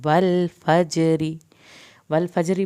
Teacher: अगर हम रा पे वक्फ नहीं करेंगे तो ज़ेर की सूरत में वल फजरी पढ़ा जाएगा और रा पतला पढ़ा जाएगा